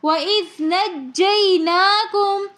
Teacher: ناکم میں نون کے اوپر کھڑا زبر ہونے کی وجہ سے ہم ایک الف کی مقدار کھینچ کر پڑھیں گے۔